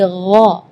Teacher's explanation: tapi kalau huruf ghain itu dari bagian tenggorokan ya. Jadi gha.